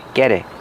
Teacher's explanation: we hear the T in get change to a fast D. Get it. And the T in it is a stop T because it's before a consonant.